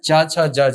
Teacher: संघर्षी इसलिए क्योंकि इनका उच्चारण करते समय हवा के रास्ते में रुकावट आती है। · जब आप च छ ज झ का उच्चारण करते हैं तो आपकी जीभ जो है वो तालु को स्पर्श करती है, तालव्य वर्ण है।